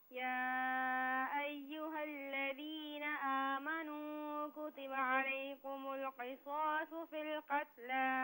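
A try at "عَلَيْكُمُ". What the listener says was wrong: اچھا، علیکم میں جو کاف ہے اسے باریک پڑھیں.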